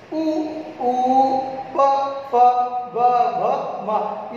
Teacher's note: ये सारे ओष्ठ वर्ण हैं, होठों की सहायता से बोले जाते हैं